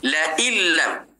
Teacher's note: nun mati bertemu dengan lam, terus masuk dalam lam